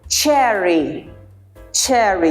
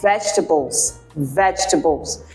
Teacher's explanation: we block the air but then we release it narrow opening friction